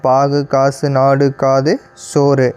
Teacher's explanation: தனிக்குறில் ஒரு மாத்திரையிலேருந்து குறைந்து அரை மாத்திரையாக ஒலிக்கும் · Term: குற்றிய லுகரம்